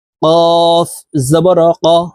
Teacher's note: কফ হরফের উচ্চারণ জিহ্বার গোড়া তার বরাবর উপরের তালুর সঙ্গে লাগাইয়া উচ্চারণ করতে হবে